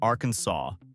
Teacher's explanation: It must be pronounced Arkansas, with the final S silent.